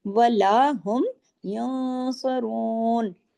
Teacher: तो इफा भी मोटा होगा य इस तरह इफा कहते हैं आवाज थोड़ी नाक में जाती है थोड़ी बाहर रहती है और इफा के साथ गुनने का लेवल है वो सेकंड लेवल